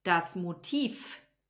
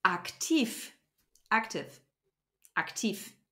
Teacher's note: the letter V which turns into an F at the end of a syllable or a word